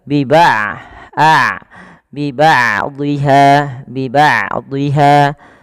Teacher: itu tertahannya suara sedangkan roh itu mengalirnya suara maka di sini huruf Ain tidak terlalu dialirkan dan tidak terlalu ditahan suaranya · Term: bainiah